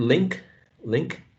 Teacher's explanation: nasal sound and we know that this one is nasal right the vowel sound is nasalized